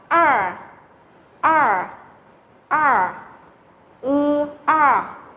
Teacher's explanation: Đây là âm cuốn lưỡi.